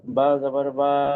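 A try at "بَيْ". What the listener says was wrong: না, সাকিন আছে দেখেন।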